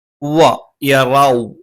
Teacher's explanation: വ എന്ന് പറയുമ്പോൾ രണ്ട് ചുണ്ടും വൃത്താകൃതിയിൽ വെച്ചുകൊണ്ട് ഉച്ചരിക്കണം